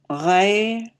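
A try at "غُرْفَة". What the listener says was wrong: Ghurfa. There's a u.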